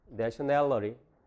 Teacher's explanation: t가 들어있는 앞에 모음, 뒤에 모음은 강세가 없어요. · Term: 플래핑